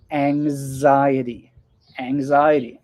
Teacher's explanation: It sounds like A-N-G, ang, and then a Z.